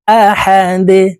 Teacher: দাল কলকুলার হরফ নিচের দিকে ধাবিত করে ধাক্কা দিয়ে উচ্চারণ করব